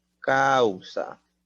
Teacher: Por ejemplo, aquí, decreciente viene a ser palabras como causa. Va de la vocal abierta A la vocal cerrada U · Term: diptongo decreciente